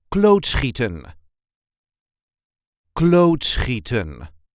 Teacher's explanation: there is a light emphasis on the first syllable